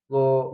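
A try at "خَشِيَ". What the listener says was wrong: Bukan go. Itu huruf kho. Kho.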